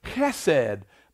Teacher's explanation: it has kind of a little h guttural sound